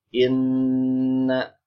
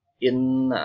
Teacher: Gunnah ini adalah artinya dengung. Nah, maka ketika kita wajib menekan pada huruf nunnya. Inna, menekan selama 2 harokat.